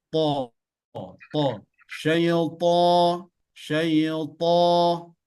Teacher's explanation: Ujung lidah menyentuh bagian tempat tumbuhnya gigi seri. To, to.